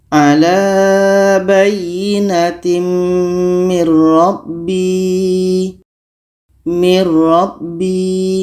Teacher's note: Ro huruf idgham bila gunnah. Maka nun mati ini kita masukkan ke ro dan tidak boleh dengung.